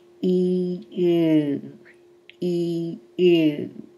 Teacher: you will hear the sound changing to an oo simply by moving the tongue back